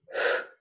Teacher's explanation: h, which is a glottal sound in English